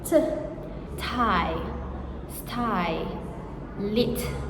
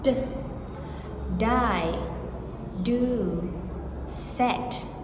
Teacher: the alveolar stops, which is tongue on alveolar ridge. T, Tie, sty, lit, voiceless.